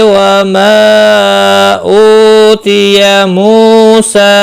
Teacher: मद्दे मुनफसिल है, 3 अलिफ के बराबर खींच कर पढ़ेंगे